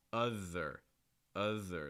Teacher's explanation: this th is different because you're going to feel some vibration in your throat